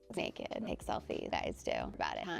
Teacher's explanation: This is called vocal fry, and it's common among young women in the US.